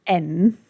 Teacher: when you say N, the tip of your tongue goes to the roof of your mouth. Then you pull the rest of the tongue up to the roof of the mouth as well. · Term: N spot